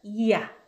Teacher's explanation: 입모양은 '이' 로 시작하는데 마지막은 '야' 그래서 발음하는 입모양이 변하기 때문에 이중 모음이에요